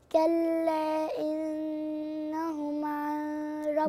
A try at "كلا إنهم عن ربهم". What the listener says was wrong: عن ربهم إدغام بس من غير غنة، يعني ما أقولش عن ربهم زي ما أنت قلت، دي غلط غلط مش صح، ما نقولش كده.